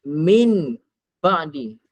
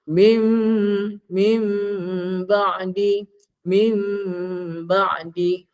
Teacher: Nun mati bertemu ba, tapi bunyinya jadi bunyi mim. Tukar bunyinya macam bunyi mim.